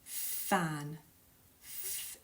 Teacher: fan a fan to cool the air down in a room there's no vibration fan f is unvoiced